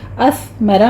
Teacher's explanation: اثمرہ میں سا پر سیٹی کی آواز بالکل نہیں آنی چاہیے، سا پر ہمس ہوگا، را مفخم پڑھی جائے گی۔